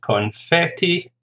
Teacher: Confetti, 3 syllables, stress on the second